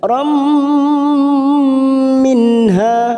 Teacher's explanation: nun sukun bertemu ha idhar halqi, kita baca jelas